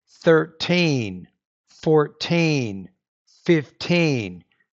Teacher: So, you're stressing the second syllable.